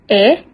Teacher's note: vokal depan sedang, dan tak bundar